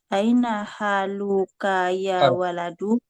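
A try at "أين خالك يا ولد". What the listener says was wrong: kha dia kha bukan ha.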